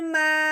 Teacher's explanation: میم کو اب ہم نے کیا کرنا ہے؟ الف کے ساتھ ملاتے ہوئے ساتھ مد کو بھی ملاتے ہوئے اس کو اب ہم نے 4 الف کے برابر لمبا کرنا ہے